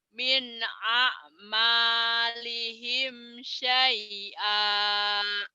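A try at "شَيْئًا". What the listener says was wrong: Syai'an. Nah, ditahan. Nah, kalau berhenti baru ya, kan ini ikro 4-nya belum dihentikan. Kalau nanti ikro 4 dihentikan baru min a'malihim syai'a, syai'a kalau dihentikan. Kalau nggak dihentikan syai'an, nggak ada yang panjang. Ayo jangan ada yang panjang.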